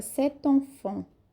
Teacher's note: a gente junta uma consoante com a vogal e a fonética ela fica cet enfant